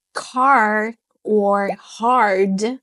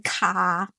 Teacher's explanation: in American English, the R shows up very bold and proud. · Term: American R